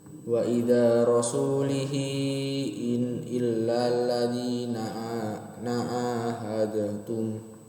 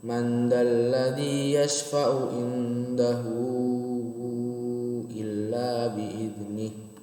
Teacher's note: Jadi pas di hu itu dipanjangkan 4 sampai 5 harokat. Karena kan dhamir bertemu dengan hamzah. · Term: mad silah kubro